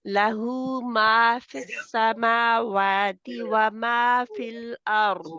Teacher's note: ما دو کاؤنٹ ہے نا، دو حرکات نمبر